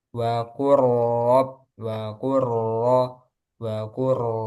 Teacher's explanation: karena langsung masuk ke ro langsung tebal ya karena rnya berharakat fathah